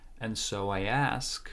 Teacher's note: there is again there is no D and it sounds like so it's only n